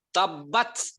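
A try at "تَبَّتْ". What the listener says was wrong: Nah, langsung. Tapi jangan ada S-nya.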